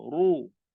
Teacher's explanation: Kalau baris depan ni, ra dia tebal. Ru. Jangan ru.